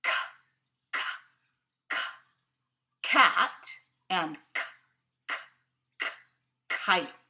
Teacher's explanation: both of those sounds happen in the back of your mouth